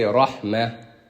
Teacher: when we stop at ta marbuta, we say ha instead of the tanween. Like rahmatan, when we stop, we say rahmah with the ha instead of the tanween.